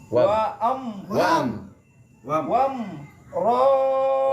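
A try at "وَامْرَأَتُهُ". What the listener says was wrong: Wah, jadi panjangin. Yang panjang cuma hu doang. Wam ro'atuhu.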